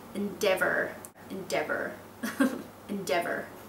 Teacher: i think sounds better with a north american accent with the strong r sound